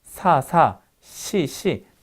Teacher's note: 시 할 때는 사보다 조금 더 뒤로 간 거 느껴지세요? 이 뒤가 어디 위치냐면 경국의 위치예요.